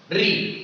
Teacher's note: तो जब री का आप उच्चारण करोगे तो आपकी जीभ अंदर की ओर मुड़ी होती है। री, तो आपकी जीभ अंदर की ओर मुड़ जाती है, तो इसी को आप मूर्धा से इसका उच्चारण किया जाता है।